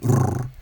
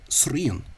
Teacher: So the S tended to be broadened as well, so that you got srien, and of course then that strong R, the roll, the trill, rrr, would have become and has become a tap, so that you'd hear srien.